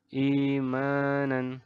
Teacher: Hamzah gambarnya seperti ini ada huruf hamzah bertemu dengan huruf-huruf madcon cara membacanya adalah dengan dipanjangkan dua harokat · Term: mad badal